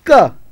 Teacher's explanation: the back part of the tongue Rises and touches to the soft palate and that contact contact of back part of the tongue and